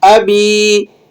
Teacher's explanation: یہ با کو کھینچ لیں گے 1 الف کے برابر